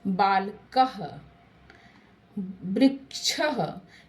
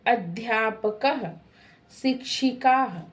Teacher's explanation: विसर्ग का उच्चारण कंठ से होता है, इसकी ध्वनि ह जैसी होती है